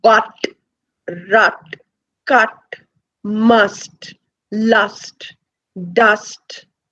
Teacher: we say that it is a central vowel because we say it is the center of the tongue that is raised just a little bit. It's not raised too much.